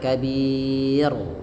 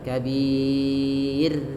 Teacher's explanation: Nah, di sini ra ro tarqik ro yang dibaca dengan tipis. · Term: ro tipis